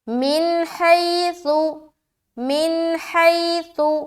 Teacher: حی میں یائلین کر رہے، نون کے اوپر ہم اظہار کر رہے تو جلدی ادا کریں گے